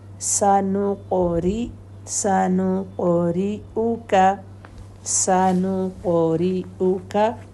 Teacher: सनुक़ क़ाफ कलकला heavy